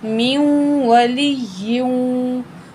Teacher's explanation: हम पढ़ेंगे मीम की ज़ेर को वाव तशदीद से मिला के, नून को नहीं पढ़ा जाएगा।